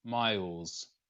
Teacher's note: when we say it, miles, we actually voice the fricative first. So first off, it's a Z sound, z, and then it changes to an unvoiced fricative, an S sound, miles.